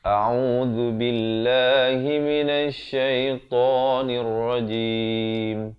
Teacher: Pastikan a makhrajnya di pangkal kerongkong, ain di pertengahan kerongkong, zu di hujung lidah, b dibacakan dengan nipis lafzul jalalah ini.